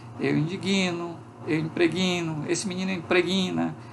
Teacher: sempre que tem uma consoante oclusiva, a gente insere uma vogalzinha depois que a gente chama de vogal epentética